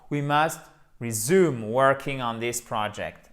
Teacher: vous avez votre accent tonique ici sur le U